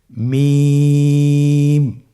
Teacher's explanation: মিম হরফটির উচ্চারণ স্থান দুই ঠোটের শুকন স্থান থেকে উচ্চারিত হয় · মিম হরফটি উচ্চারণের ক্ষেত্রে অবশ্যই বারিক হবে, পাতলা হবে এবং তিন আলিফ টেনে উচ্চারণ করতে হবে।